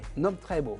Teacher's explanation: il y a quand même un accent tonique là, on avale un peu le C